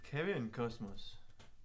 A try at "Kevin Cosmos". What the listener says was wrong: No, it's the S. Dutch S's are really like Cosmos. That sounds a bit Spanish.